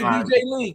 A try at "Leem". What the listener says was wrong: No, not lean. Like I think lean with an M. Like it's Salim.